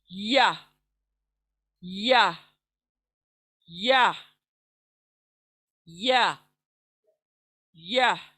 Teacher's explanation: तो और लास्ट है ई वाला हिस्सा जो हुरूफ शजरिया है, जहाँ से जीम निकलता है, जहाँ से शीन निकलता है, वहाँ से या निकलता है, यानी सेंटर ऑफ द जुबान के सेंटर पार्ट से और ऊपर के तालू से